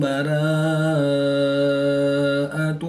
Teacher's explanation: کھڑی زبر کے بعد حمزہ اسی کلمے میں ہے تو یہاں پر مد متصل ہوگی، 3 سے 5 الف تک کھینچ کر پڑھیں گے۔